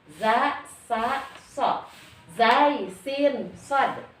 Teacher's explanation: Ini ujung lidah menyentuh pangkal gigi seri atas. Yang zai, sin, dan sod, ujung lidah menyentuh pangkal gigi seri bawah.